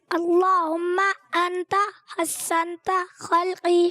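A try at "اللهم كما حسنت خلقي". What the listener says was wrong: انتا نہیں آئے گا, اللہم حسنت خلقی فحسن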